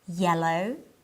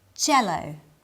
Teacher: when I say yellow my tongue touches the back of my bottom front teeth when I say jello the tip of my tongue touches the roof of my mouth